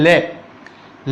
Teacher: अपनी जबान ऊपर मूर्धन्य के वहां पर टच होने के बाद में दोनों अपनी जुबान के दोनों साइडों से हवा बाहर निकल जाती है। जब अपन बोलते ले अपन बोलते हैं तो अपनी जबान जो है मूर्धन्य के वहां पर टच होने के बाद में बाहर निकल जाती है और तब अपने वहां पे दोनों साइडों से हवा बाहर निकलती है। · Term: पार्श्विक